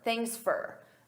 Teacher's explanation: At a natural pace, native speakers, we reduce sound. So for becomes fur.